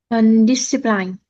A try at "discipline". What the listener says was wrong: Yes, but we need to pronounce it this way. Discipline. So it's a soft I each time. Discipline.